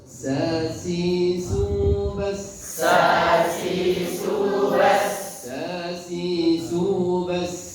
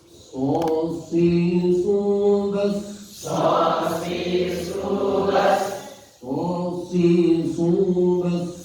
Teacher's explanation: Sin sama shad sama tempatnya, hanya beda sifat. Kalau sin tipis, kalau shad tebal. Kalau sin meringis, kalau shad mencucu.